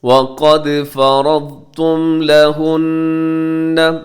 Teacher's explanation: وقد میں دال قلقلہ ہوگا کیونکہ دال ساکن ہے، قاف موٹا ہوگا۔